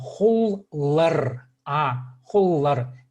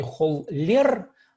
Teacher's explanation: О твердое гласное, О твердое. В аффиксе обязательно будет твердое гласное.